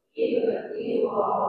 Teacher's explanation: pastikan cukup enam harakat